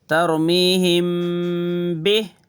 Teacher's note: میم ساکن ہے، میم کے اوپر جزم، اس کے بعد با آیا تو میم ساکن کے بعد با آیا تو اکفا کرنا